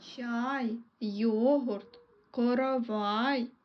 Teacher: коровай звук а іде наступний він є голосним позначаємо кружечком і останній звук в слові коровай є звук й він є приголосним але є м'яким приголосним